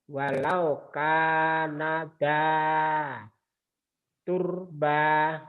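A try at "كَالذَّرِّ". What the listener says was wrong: Bukan tur, tapi kur. Ada kepalanya. Walau kana dza qurba.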